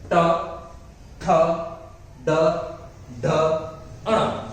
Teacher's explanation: જીભ છે એ આખી તમારી બેન્ડ વળી જાય પાછળ વળી જશે અને છેક ગળામાં ઉપરના ભાગે ભટકાશે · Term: મૂર્ધન્ય